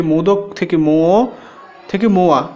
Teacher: এখানে মধ্য ব্যঞ্জনাগম হচ্ছে ইয় শ্রুতি ধ্বনি আসছে